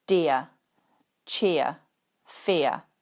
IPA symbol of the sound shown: ɪə